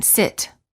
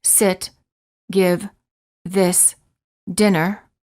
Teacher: the lips are slightly parted and relaxed the tongue is also relaxed and high but not as high as for the e sound